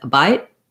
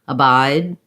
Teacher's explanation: If I said abide, you can hear how it sounds a little more like I'm saying a bite with a T. Abide with a D, I'm holding my vowel longer.